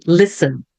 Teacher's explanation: não pronuncio o T